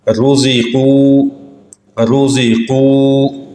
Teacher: را کے اوپر پیش ہو تب بھی را موٹی پڑھی جائے گی